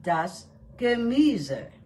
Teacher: There are 3 syllables in this word, and the stress is on the second syllable.